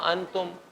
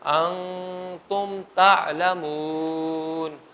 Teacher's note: تا ہے نا حروف اخفاء میں سے، ما قبل نون ساکن ہے، تو اس لیے یہاں پر ہم آواز کو چھپائیں گے